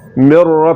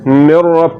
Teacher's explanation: जब हम नून को रा में मिला देंगे तो नून की सिफत गुन्ना बाकी नहीं रहेगी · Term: इगामे ताम